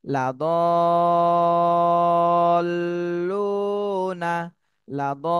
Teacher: দদ লাম জবর, বানানোর সময় মিলাতে হবে, কিন্তু উচ্চারণ করার সময় আগে চার আলিফ টান দিয়ে তারপরে লামকে ধরতে হবে